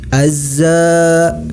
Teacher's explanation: alif lam syamsiah alif lam tidak nampak tapi dimasukkan langsung kepada huruf Zai Azza hukum bacaannya adalah motto by dibaca panjang sebanyak dua harokat